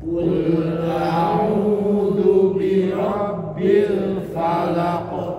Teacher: Ketika qalqalah qof itu tidak perlu terlalu nyekluk.